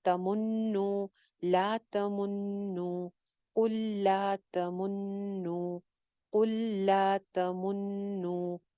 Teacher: قل کہہ دیجئے, لا تمنو, لا تمنو, تمنو دو پیشیں آ رہی ہیں, تمنو نہیں کرنا, تمنو کرنا ہے. میم کے اوپر بھی پیش پڑنی ہے اور نون کے اوپر تو پیش ہے ہی, نون کے اوپر شد بھی ہے لہٰذا غنہ بھی ہوگا